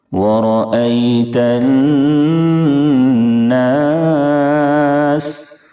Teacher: نون کے اوپر تشدید ہے اس لیے نون میں 1 الف کے برابر غنہ کریں گے. سین کی ادائیگی میں سیٹی جیسی آواز نکلنی چاہیے.